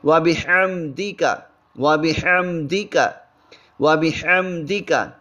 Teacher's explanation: ہا وسط حلق سے نکالیں گے